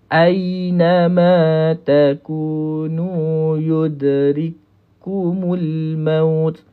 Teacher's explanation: Ni kena rapat lah ni. Huruf ya ni tengah lidah rapat dengan langit.